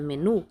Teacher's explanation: Por exemplo, quando falamos a palavra menu, conseguimos identificar que a sílaba nu é a sílaba mais forte da palavra. Sendo ela a última sílaba, ou seja, a primeira sílaba de trás para frente, sendo a mais forte e terminando com vogal, ela leva acento.